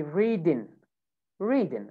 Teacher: you remove the g sound you say reading